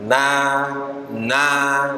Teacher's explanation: ujung lidah bertemu dengan langit langit depan atau gusi gigi seri atas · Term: makhrajnya